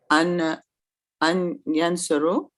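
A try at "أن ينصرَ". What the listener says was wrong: An yansura with a fatha at the end.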